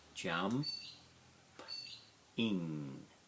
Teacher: Now the P is pretty silent, it's almost jump